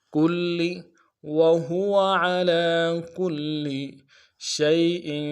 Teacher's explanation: شین کو یا کے ساتھ ملانا ہے، یا لین ہے بغیر کھینچے پڑھیں گے